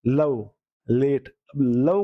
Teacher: जीभ की बगल से हवा निकलना